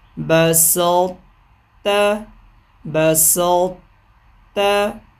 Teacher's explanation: طا کی آواز بھی باقی رہی، تا میں بھی شامل ہو گئی